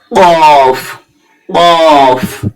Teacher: জিবের গোড়া হতে একটু আগে বাড়ি